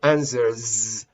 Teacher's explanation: the pronunciation of the final S is z, like a mosquito flying, because answer, there is a vibration of a vowel chords here.